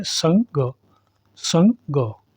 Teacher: एक तो ये है अनुस्वार। अनुस्वार जो होता है वो नासिक के होता है, यानी इसकी ध्वनि नाक से आती है।